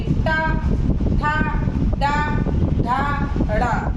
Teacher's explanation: मूर्धा मतलब हमारे मुख की छत, ये जो ऊपर की होती है अंदर, तो उससे हमारी जीभ कहाँ टच होगी, मूर्धा से। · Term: मूर्धन